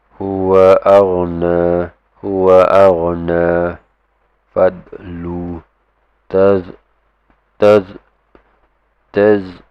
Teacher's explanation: these are not your qalqala letters, so do take note to not give it an echoing sound.